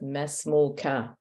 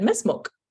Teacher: He didn't pronounce the vowel on the kaf. He said mesmuk.